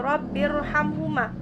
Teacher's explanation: Kemudian ada rabbirhamhuma, jika di sini dibaca wasol, maka rabbirhamhuma, ra-nya dibaca tarqiq, sebab ra sukun didahului kasroh